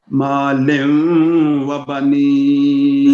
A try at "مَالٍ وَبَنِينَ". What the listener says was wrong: لیوں نہیں مالیوں، باریک کریں دو زیر کی تنوین کو.